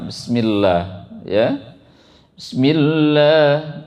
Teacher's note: di kata Allah itu dibaca tipis Allahnya ya. Nah, jangan dibaca tebal.